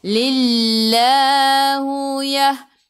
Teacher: Sebelum Allah ada baris bawah kena baca nipis.